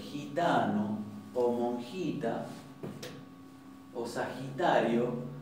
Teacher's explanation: pronunciamos una jota más adelantada en el paladar